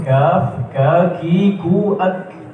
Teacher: Antara itu pangkal lidah ditempelkan tempat keluar huruf kaf.